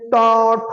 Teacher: हमारी जीभ क्या हो रही है? मुड़ रही है, जीभ मुड़ रही है, ऊपर छू रही है चिकने भाग को। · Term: मूर्धा